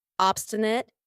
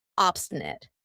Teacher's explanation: notice how I pronounce it with a schwa at the end. Obstinate, not obstinate.